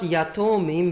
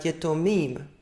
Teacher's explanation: And this is not yatomim, but yetomim. So the original kametz becomes shorter, and because it is written underneath a yod, which is a non-guttural, it becomes a simple shwa.